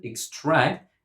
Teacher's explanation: As a verb, we pronounce it extract and we put the stress on the second syllable.